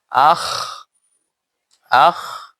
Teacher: আদনায়ে হল্ক, এই কণ্ঠনালীর উপরের অংশ, আর এই জায়গাটা যা মুখের নিকটবর্তী স্থান। এখান থেকে খা আর গাইন উচ্চারিত হয়